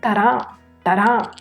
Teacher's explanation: ਹਹਾ ਹਲਕਾ ਜਿਹਾ ਪਿੱਛੋਂ ਆਵਾਜ਼ ਦਿੰਦਾ ਹੈ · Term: ਦੁਤ ਅੱਖਰ ਹਹ